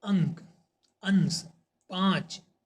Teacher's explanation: नाक से सांस अधिक निकलती है और मुख से कम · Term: अनुस्वर